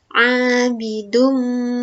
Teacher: harokat domah tanwin bertemu huruf mim dibaca masuk dengan dengung. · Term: idgham bi gunnah